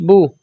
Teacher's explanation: پیش کو ہونٹوں کو گول کر کے پڑھیں گے یعنی کہ گول آواز کے ساتھ